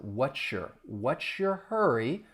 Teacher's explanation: Whature? So that ts that s plus the y and we get a shh sound. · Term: assimilation